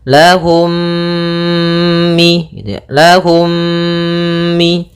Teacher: Cara membacanya, mim yang pertama dimasukkan kepada mim kedua dan ditahan gunnahnya. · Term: idgham mimi